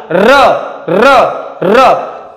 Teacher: कंपन होतंय, व्हायब्रेट होतंय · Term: कंपित वर्ण